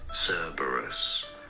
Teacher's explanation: stress on the first syllable both British and American pronunciations